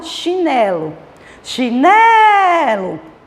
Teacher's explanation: O né é a sílaba tônica dessa palavra.